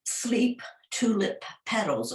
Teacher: In this poem, Sleep, Tulip, Petals, okay, you get the p sound. That's an explosive sound, but it's at the end, the sound at the end of sleep, and at the end of tulip, but at the beginning of petals.